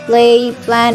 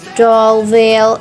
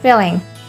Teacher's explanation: Lateral it is consonant in which the airstream proceeds along one or both of the side of the tongue, but it is blocked by the tongue from going through the middle of the mouth. There's only one lateral in English, which is L, and L occurs initially such as play, plan, etc., and then vinally such as drawl, veil, and then intervocalically, between vowels such as filling.